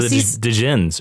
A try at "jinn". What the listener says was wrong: And the, or jinn. You don't say the D.